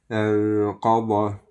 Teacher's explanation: یہ قاف اور ضاد موٹا پڑیں گے